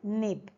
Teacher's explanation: The tongue tip or the tongue tip of the tongue touches the alveolar ridge or the hinder part of the upper set of teeth, but the soft palate is lowered, allowing the air pass through the nose